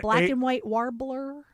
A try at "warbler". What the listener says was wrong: Warb. Why can't you say warb? You're saying wad. warb. Warb. Oh, yeah, you were saying it in a weird way. Yeah, warbler.